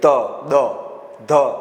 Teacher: દાંતને અડીને બોલે એવું નહીં, હા, પણ જ્યાં દાંતની સહાય પડે છે બોલતી વખતે જીભ દાંતને અડે, ત, દ, ધ, આ બધા જીભની જરૂર પડે છે, ઉપરના દાંતની જરૂર પડે છે. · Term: દંત્ય વ્યંજન